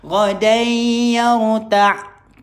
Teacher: Tanwin tak selari. Jumpa dengan ya. Idgham ma'al ghunnah.